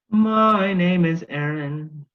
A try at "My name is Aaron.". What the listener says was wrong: Yeah, but let's not go into a singy thing for my name is Aaron. Can it be kind of like aggressive almost?